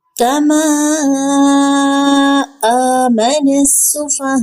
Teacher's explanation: سین میں باریک سیٹی کی آواز